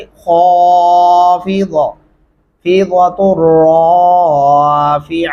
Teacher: ख़ा को मोटा और पुर करके पढ़ेंगे